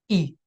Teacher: it's the um brightest vowel with the highest frequency